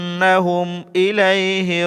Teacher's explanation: এক আলিফ পরিমাণ লম্বা করে গুন্না করতে হবে